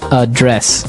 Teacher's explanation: So, the verb address has the the stress on the second syllable